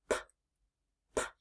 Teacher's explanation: did you notice your voice stays off while you make the P sound one of the ways that you can notice that your voice · Did you feel that there was no buzzing in your throat?